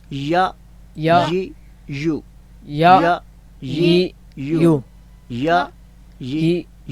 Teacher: بس یہ مشق کر کے ہم نے صرف یہ پتہ چلانا تھا کہ اس کا مخرج جو ہے، اس کی آواز کے نکلنے کی جو جگہ ہے وہ وسط لسان یعنی زبان کا درمیان، اور اس کے مقابلے میں وسط تالو تالو کا درمیان